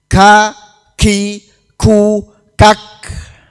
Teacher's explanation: pangkal lidah yang agak ke depan mengenai langit-langit. Menjadi makhrajnya huruf kaf.